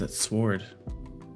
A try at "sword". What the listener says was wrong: That's not how it's pronounced. But no, apparently sword is pronounced without the W.